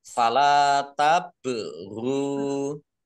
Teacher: Fala tabru, lam fathah alif matobi'i, panjang dua harokat. Ba sukun bacaan kolkolah, dibaca memantul, ditampakkan pantulannya.